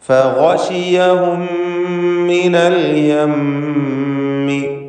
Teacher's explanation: ഗശിയഹും എന്നതിൽ സാക്കിനത്ത മീമിന് ശേഷമുള്ള മീമിൽ പൂർണ്ണമായും ലയിപ്പിച്ച് ഒറ്റ ശബ്ദമുള്ള മീമാക്കി മണിക്കണം.